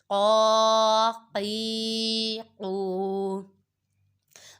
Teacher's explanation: دو نقطوں والا قواف حروف مستعالیہ میں سے ہے، اس کو پر پڑھیں گے